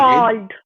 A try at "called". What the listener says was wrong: But you said if you called me. Cold, no. Cold is different one.